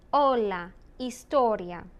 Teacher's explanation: the H is completely silent